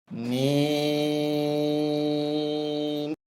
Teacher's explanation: এই হরফটি বলতে উভয় ঠোঁট মিলিয়া শুরু হবে, উভয় ঠোঁট মিলিয়া শেষ হবে।